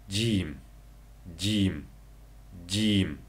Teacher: Xuddi Uyg'ur tilidagi ji harfi bilan o'xshash talaffuz qilinadi. Til uchining o'ttiri ustungi tanglayga tegish orqali chiqadi. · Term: jaronliq uzuk tovush